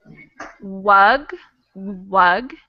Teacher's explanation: the w is made with your lips in this tiny little o shape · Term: the w sound